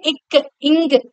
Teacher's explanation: சொல்லி பாருங்க இக் இங்க சொல்லும்போது அந்த அழுத்தமானது நம்முடைய நாக்குடைய முதற பகுதியானது மேல் அன்னத்துடைய அந்த அடிப்பகுதியை தொடறதுனாலதான் இந்த எழுத்துக்கள்ானது பிறக்குது அப்படின்றாங்க.